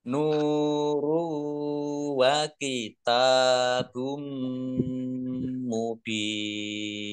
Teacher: domah tanwin bertemu dengan huruf mim bacaan idgham bi gunnah masuk dengan mendengung, yaitu mendengung mim, ditandai mimnya ada tasdidnya.